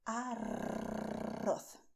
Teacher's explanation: this arroz sound, which is done with the tip of your tongue, touching the front teeth, but vibrating when you expel the air.